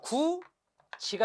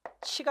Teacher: 디귿은 지읒으로, 티읕은 치읒으로 바뀝니다. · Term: 국외음화